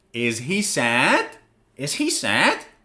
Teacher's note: your tone of voice goes higher at the end of the sentence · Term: Rising intonation